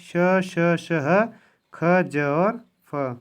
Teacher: दूसरा संघर्षी व्यंजन, और जिन व्यंजनों के उच्चारण में दो उच्चारण अथवा अवयव इतनी निकटता पर आ जाते हैं कि बीच का मार्ग छोटा हो जाता है, तब वायु उनसे घर्षण करती हुई निकलती है